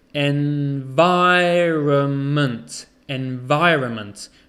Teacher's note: we don't say the n so it's environment environment the stresses on the vi environment okay